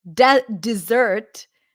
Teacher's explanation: stress is on the second syllable and that's the dessert